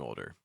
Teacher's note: saying older can be a challenge because of that o sound that links with a dark l sound it then links with a D sound and then even links with like an R sound oh my